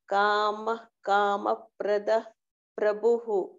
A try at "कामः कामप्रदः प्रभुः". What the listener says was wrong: I don't think you are stressing the Mahaprana. Just stress a bit. Prabhuhu. Just practice that, Bhagini.